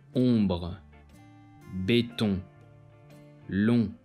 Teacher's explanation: This sound is exactly like a regular O, but with the air flowing through the nose as well as the mouth